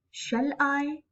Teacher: first one would be unstressed and second one would be stressed